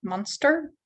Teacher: гласная O не под ударением, будет шва